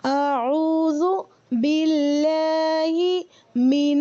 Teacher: لام کو بھی ہم باریک پروناؤنس کریں گے